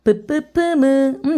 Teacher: 이거는 두 입술 소리야